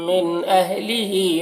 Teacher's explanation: من کے نون میں اظہار ہوگا، اس نون کو جلد پڑھنا ہے۔ اہلہی ہا کے نیچے کھڑا زیر ہے جو یا مدہ کی طرح ہے، اسے ایک الف کے برابر کھینچیں گے۔